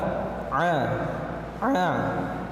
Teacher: huruf Ain Maksudnya Keluar daripada Tengah tenggorokan ah ah bukan dari rongga hidung atau keluar dari hidung ah